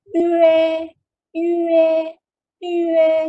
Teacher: Sebut E tapi muncung mulut. · U yang titik tu. Which is kita kena muncungkan mulut.